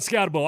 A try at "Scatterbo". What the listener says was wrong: First of all, you got to say his name right. But despite the fact there's only a B-O, it's Boo. Scatterboo.